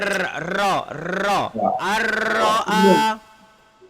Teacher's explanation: Menyebut hurufnya dengan getaran hujung lidah serta berulang. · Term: takrir